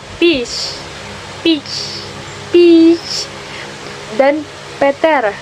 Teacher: dengan hembusan keluarnya udara dengan keras sehingga terdengar bunyi H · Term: Aspirasi